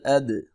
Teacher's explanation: دال ساکن ہے، حروف قلقلہ میں سے ہے، تھوڑا سا ہلا کے پڑھیں گے، قلقلہ کریں گے